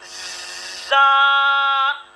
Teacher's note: ये सख्ती और सीटी से बारीक अदा होता है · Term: सख्ती और सीटी वाला हर्फ